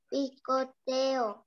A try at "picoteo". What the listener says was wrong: Ajá, picoteo. Muy bien.